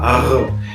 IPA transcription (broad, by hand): ʀ